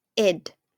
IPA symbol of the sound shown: ɪd